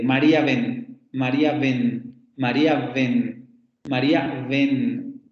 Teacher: la palabra ven, si aparece también entre vocales, se pronuncia con el fricativo.